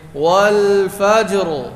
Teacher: وقف میں را کو پر پڑھیں گے